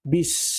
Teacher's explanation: sin berbaris mati dan sebelumnya huruf ba berbaris bawah. Maka kita kena jelaskan bunyi huruf sin tersebut. Bis. · Jangan kita baca seolah-olah huruf sin ada sifat qalqalah. Sedangkan huruf sin bukanlah daripada huruf-huruf yang dikategorikan sebagai huruf qalqalah.